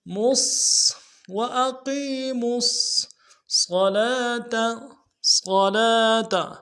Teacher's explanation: میم کو صاد کے ساتھ ملائیں گے، صاد کی سیٹی موٹی ہوگی